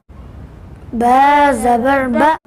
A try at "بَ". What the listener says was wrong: جھٹکا نہیں لگائیں گے، با زبر با،